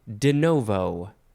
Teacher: the no is always emphasized